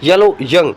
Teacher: In palatal, hard palate is the passive articulator. This will not move, hard palate, and the front of the tongue is the active articulator.